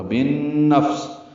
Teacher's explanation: بالنفس میں با کو نون سے ملانا ہے، ادغام شمسی ہے اور غننے کے ساتھ ہوگا۔ · سین صفیر کی آواز سے ادا کرتے ہوئے لام سے ملا دیں گے